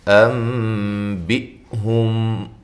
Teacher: نون ساکن کا اقلاب ہے مع الغنہ۔ بِ، حمزہ کو تحقیق کے ساتھ اور جھٹکے کے ساتھ۔ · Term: اقلاب مع الغنہ